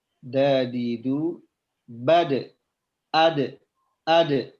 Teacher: cara membaca Qalqalah huruf Dal ya yaitu dengan cara dipantulkan